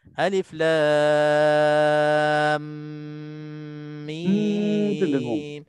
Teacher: Kalau alif lam mim kena tutup mulut dan kena ada dengung.